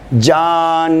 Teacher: یہ نون جو ہے ایک تو کھینچ کر پڑھا جا رہا ہے، کھینچ کے پڑھا جا رہا ہے چونکہ یہ جمع ہے، دو نونوں کا مجموعہ ہے. جان، چونکہ دو نون ایک ساتھ آ گئے ہیں تو یہ کھینچ کر پڑھیں گے